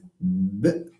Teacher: B, there is vibration. It's voiced, of course. And because we need two lips, it's also called bilabial.